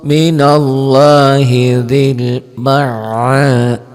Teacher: lafaz Allahnya dibaca tebel, tafkhim. Kalau tadi kan tarkik, ini tebel.